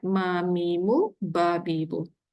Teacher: Okay, settle bagi bibir yang terbuka. Bibir rapat, nak bunyikan dua huruf ni mim dengan ba